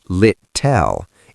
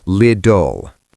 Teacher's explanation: Second L is dark. And the T's in the middle, in America, they are flap T's.